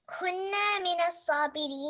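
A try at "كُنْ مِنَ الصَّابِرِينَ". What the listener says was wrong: There's no kunna. There's no kunna, friend. It's not fatha, okay? There's qaf and noon sukun. It's kun, not kunna.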